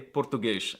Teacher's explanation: Instead, they make silly noises like pronouncing S's at the end of words as an SH sound. So they say português instead of Português.